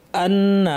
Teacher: হামজা শক্ত হবে, নুনের উপর তাসদিদ লম্বা গুন্না